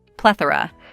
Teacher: the stress is on the first syllable PL plethora We Lay stress on PL say it with me